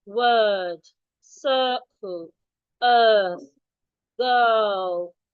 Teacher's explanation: So make sure your tongue is in a relaxed position. Your jaw drops. It's a long vowel.